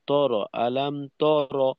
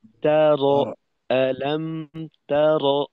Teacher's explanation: র মোটা করতে গিয়ে অগ্রিম প্রস্তুতি নিয়ে ফেলি, যে কারণে তায়ের জবরটাও ত এর মতো হয়ে যায়।